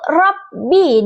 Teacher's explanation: sedangkan huruf ba makhrajnya itu di dua bibir